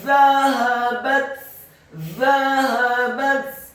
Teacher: Fa'atul ladzina zahabat, kata zahabat, dha-nya dibaca tipis, lidahnya agak keluar sedikit, fathah 1 harokat, kemudian ha-nya dibaca tafkhim tebal, fathah 1 harokat, ba-nya dibaca tipis, fathah 1 harokat, dan ta-nya dibaca sukun dan dihameskan